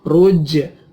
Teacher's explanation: jimnya dibaca qalqalah atau dipantulkan